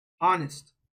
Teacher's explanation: what is the first letter sound that you hear? It's not H, right? It's O.